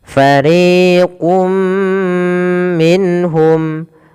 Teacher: dan itulah yang kita namakan dengan Idgham yang kedua bunah artinya disertai dengan gunah disertai dengan penahanan dan memasukkannya ke rongga hidung kita